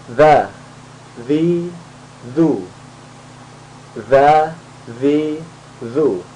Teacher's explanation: Jadi posisi lidah di antara dua gigi. Nah, seperti seakan-akan digigit ya, seakan-akan digigit tapi tidak digigit. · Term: zal